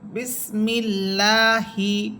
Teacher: আল্লাহ শব্দের মধ্যের লামের ডানের হরফে জের হইলে আল্লাহ শব্দের লামকে বারিক বা পাতলা করিয়া পরিত হয়